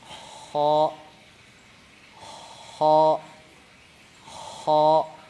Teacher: Berarti suaranya tebal ya karena terasa ngangkat pangkal lidahnya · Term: dibaca tebal